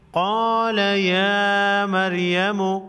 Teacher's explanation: را پر جزم ہے، را سے پہلے حرف میم پر زبر ہے تو را کو پھر بھی موٹا پڑھیں گے